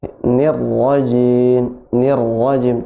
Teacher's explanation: untuk huruf ra tidak boleh getarannya lebih dari dua getaran aja. Cukup dua getaran.